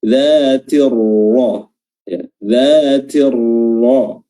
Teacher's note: Karena dia berharokat fathah, maka huruf ra-nya tetap tebal.